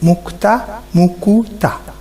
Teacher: তোমরা দেখো মুক্তা, মরস্বকার ক তো আকার। এখানে কিন্তু কয়ে হ্রস্ব উকার এসেছে, মুক্তা হয়ে গেছে মুকুতা। তাহলে এই ক, এখানে কিন্তু উ ধ্বনি এসেছে, উকার এসেছে, মুকুতা। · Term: মধ্য স্বরাগম